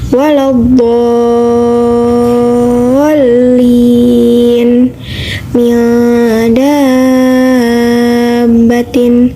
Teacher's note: mad tabi'i diiringi oleh huruf yang bertasydid, panjangnya 6 harokat. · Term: mad lazim mutsaqal kalimi